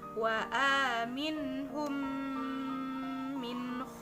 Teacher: Ilham mitslain adalah apabila mim sukun bertemu dengan huruf mim contohnya cara membacanya dengan membaca mim sukun atau guna yang ditahan selama dua sampai dengan tiga harokat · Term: idgham mimi